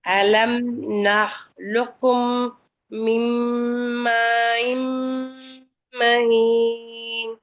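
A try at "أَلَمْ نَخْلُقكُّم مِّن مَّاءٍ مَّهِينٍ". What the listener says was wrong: சின்ன காஃப்ல சத்து வரல. சின்ன காஃப்ல சத்து வரணும். அலம் நஹ்லுக்கும்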